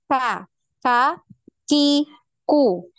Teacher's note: lidah bagian paling belakang ini nempelnya di langit-langit antara bagian tulang yang lunak dengan tulang yang keras · Huruf qaf ini tidak ada aliran nafasnya, sedangkan untuk huruf kaf ini ada aliran nafas. Maka ketika kita mengucapkan huruf kaf, ini seperti ada suara desisan, ya, k, k, ya.